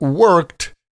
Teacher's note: worked has like a t sound at the end